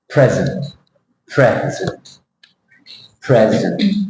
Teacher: you see the stress there in the first syllable present and the second syllable has a